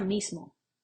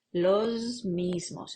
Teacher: como la M es sonora, la S previa se hace sonora